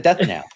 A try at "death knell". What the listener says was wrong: KNELL, Nell. So in your accent, it sounds like you're saying nail. No, ELL. it's like a death bell, a death knell.